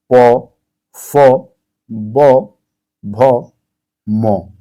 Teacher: आप ध्यान देंगे सबसे ज्यादा जो रोल अपना प्ले कर रहा है वो ओष्ठ है। क्या है? आपके लिप्स हैं। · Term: ओष्ठ व्यंजन